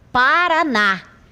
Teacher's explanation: Porque nesta palavra a última sílaba aqui ocupa a posição última é tônica, é a que eu pronuncio com maior intensidade · Observe que tem mais intensidade nesta última sílaba e ela é chamada de oxítona.